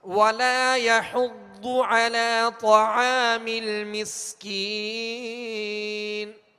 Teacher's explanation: وَلَا يَحُضُّ، ضاد پر پیش ہے، حا پر بھی پیش ہے، ہونٹوں کو کامل گول کریں گے اور حا کو ضاد سے ملائیں گے